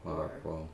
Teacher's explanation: the wa reads a lot like an oo in terms of production, like where the tongue is, and so it would make sense for it to go to a back vowel.